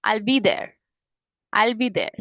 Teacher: आइल में ज्यादा मैंने स्ट्रेस दे के बोला, मतलब टोन मेरी ऊपर थी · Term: फॉलिंग इंटोनेशन